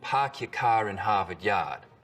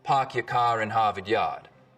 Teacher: In Boston, it's usually pretty fronted: park your car in Harvard Yard. In Rhode Island, it's back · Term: start vowel